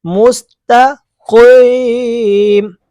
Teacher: باریک کاف نہیں، موٹا قاف ہے